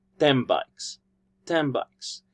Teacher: the B sound for bikes has assimilated the n Sound for 10 creating a new sound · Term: assimilation